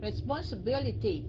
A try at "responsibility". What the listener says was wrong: Responsibility. Responsibility. Responsibility. Responsibility.